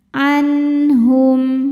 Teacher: Jadi H adalah huruf tenggorokan. Maka cara baca nun sukunnya adalah dibunyikan dengan bunyi asalnya N. Jelas tidak perlu ditahan. · cara baca nun sukunnya adalah dibunyikan dengan bunyi asalnya n. Jelas, tidak perlu ditahan. Anhum. Tanda wakofnya dinamakan wakof lazim atau wakof mutlak yang artinya wajib berhenti. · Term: izhar halqi